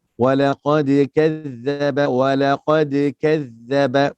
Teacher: pastikan za di hujung lidah, hujung gigi tahu. Jangan kaf tu tebal.